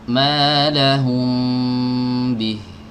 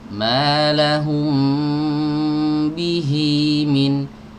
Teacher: Tapi ketika saya sambung, malahum bihi min, hi-nya 2 harokat. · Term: mad silah qasirah